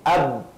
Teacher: Ba makhrajnya paling mudah kerana dia menggunakan 2 bibir.